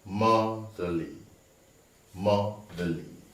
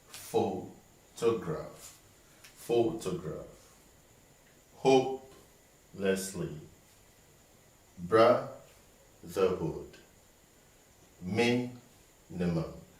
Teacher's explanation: So all these tri-syllabic words have the stress on the first syllable.